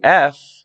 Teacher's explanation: if you say F and touch your throat you don't feel anything right because that's voiceless